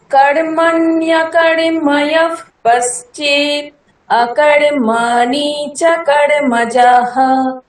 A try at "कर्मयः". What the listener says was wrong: কর্মজহ না, কর্ময়ঃ।